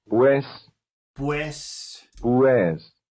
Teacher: When in the proximity of another vowel, the Spanish U sounds very much like the English W.